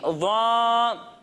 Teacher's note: जब हम ज़ा की अदायगी करेंगे तो इसमें सीटी की आवाज़ नहीं आएगी और इसे हम मोटा कर कर पढ़ेंगे